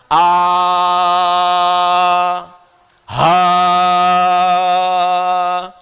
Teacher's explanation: ha itu huruf yang mengambil banyak nafas